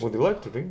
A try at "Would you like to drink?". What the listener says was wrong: Да, правильно, да.